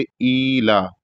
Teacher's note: الف کے نیچے کھڑا زیر ہے تو اس کی وجہ سے ایک الف کے برابر کھینچیں گے، ایلا، اور لام پر بھی کھڑا زبر ہے تو دونوں کو ایک ایک حرف کے ایک ایک الف کے برابر کھینچیں گے.